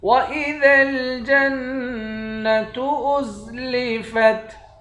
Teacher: وَإِذَا جیم کے بعد نون ہے، نون پر تشدید ہے، اس نون پر غنہ کریں گے، جیم کو نون کے ساتھ ملا کر نون پر غنہ کریں گے